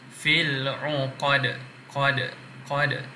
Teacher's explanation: Huruf dal kita matikan sebab kita nak berhenti dan kita qalqalahkan dia, lantunkan.